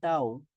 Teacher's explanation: আমরা এটা নরম করে পড়বো তাড়াতাড়ি পড়বো টান হবে না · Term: লিনের হরফ